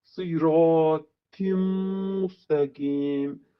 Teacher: Sad hərfi qalın hərfdir və bunu sı kimi fikirləşirik və kəsri ilə oxuyanda sı olur. Siratim müstəqim və ta'nın da qalınlığını saxlayaq.